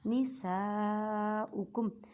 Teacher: الف سے پہلے زبر، الف مدہ کا قاعدہ بڑی مد ہے، تقریباً 6 الف کی مقدار میں کھینچ کر پڑھیں گے